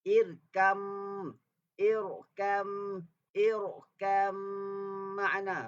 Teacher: Asalnya irkab tapi jadi irkam ma'ana. Bila ba mati bertemu dengan mim, maka dimasukkan ba kepada mim. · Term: idgham mutaqaribain